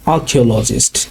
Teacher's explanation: এখানে আরটা সাইলেন্ট থাকবে, আর্কিওলজিস্ট শুধু আ দিয়ে উচ্চারণটা হবে।